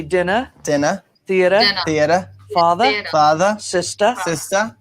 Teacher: in Boston we're gonna drop the r · We have a weak especially when it's at the end of a word, like in father, sister, brother, theater. In Boston, we're going to drop the R.